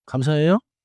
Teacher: Let the pitch rise gently, not like a big English drama question.